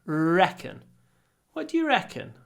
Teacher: do a nice long R reckon